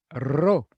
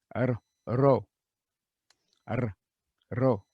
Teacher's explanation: Ro, a trilled R, slightly trilled R.